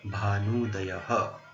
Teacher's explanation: Bhanu ends in U and Udayah starts with U, so U plus U becomes Dirgha U